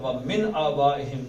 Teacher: نون ساکن کے بعد حمزہ آ گیا تو حمزہ کی وجہ سے نون کا اظہار ہوگا، من نہیں پڑھیں گے بلکہ من پڑھیں گے.